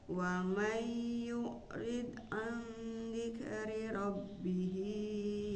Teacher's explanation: Wa may ditahan juga bu, karena itu nun sukun bertemu huruf ya jadi idgham.